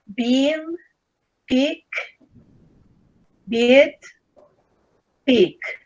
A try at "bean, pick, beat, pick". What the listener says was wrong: Okay, the problem is that you pronounced all of them with E.